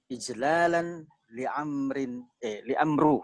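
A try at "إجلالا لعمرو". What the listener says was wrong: Li'amrin, betul. Waw itu tulisan saja tapi bacanya amrin ya. Karena ada huruf jar.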